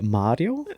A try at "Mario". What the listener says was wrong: yeah, without the Italian accent